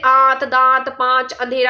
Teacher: जिस पर चांद बिंदी लगी होती है वो किसकी होती है, अनुनासिक की होती है। तो ध्वनियों के उच्चारण में वायु नाक और मुख दोनों से निकलेगी